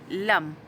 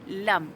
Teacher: hujung lidah ditekan ke gusi di atas gigi depan